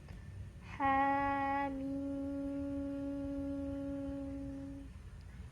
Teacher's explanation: Jadi yang kita baca 2 harokat hanya ha saja.